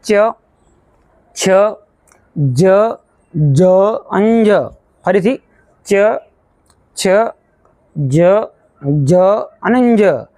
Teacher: તો તે અવાજો છે તે તાળવામાંથી તેનો અવાજ આવતો હોય છે આપણી જે જીભ જે છે તે તાળવાને અડે છે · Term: તાલવ્ય વ્યંજનો